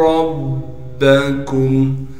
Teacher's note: فَقُلْتُ اسْتَغْفِرُوا رَبَّكُمْ, را کو موٹا کر کے پڑھیں گے اور را کو آگے با سے ملا دیں گے اس لیے کہ با پر تشدید ہے, تشدید ہونے کی وجہ سے تھوڑا ٹھہراؤ رکھیں گے. کاف کو میم سے ملائیں گے بغیر غننے کے اور کاف کو باریک کر کے پڑھیں گے